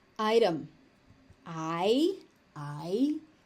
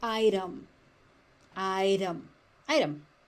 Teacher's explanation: That T is considered to be a tap T or a flap T.